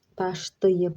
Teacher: 2 dənə A hərfi, biri I şəklində tələffüz olunub, biri də A şəklində tələffüz olunub.